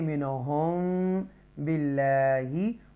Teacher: یہاں پر اکفائے شفوی ہے تو یہاں گنہ کریں گے منہم باللہ